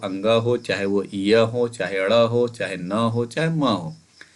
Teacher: अनुनासिक क्यों बोला गया, क्योंकि इनका उच्चारण हम लोग कैसे करते हैं, नाक से करते हैं, तो नाक से उच्चारण की वजह से इनको अनुनासिक बोला जाता है।